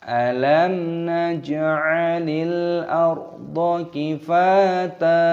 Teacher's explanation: Mimnya berharokat sukun, maka di sini dibaca idhar syafawi, mim sukun bertemu dengan huruf nun. Ini jangan dibaca panjang, tapi dibaca idhar, dibaca jelas.